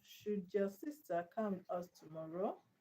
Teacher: Now the emphasized word is your.